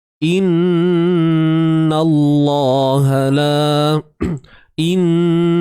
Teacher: kita tahu huruf lam pada kalimah Allah ni perlu dibaca dengan tebal, kan? Perlu dibaca dengan tebal.